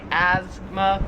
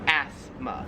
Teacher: We kind of say it more like a Z sound, like asthma, where here it's more like an F sound, like asthma.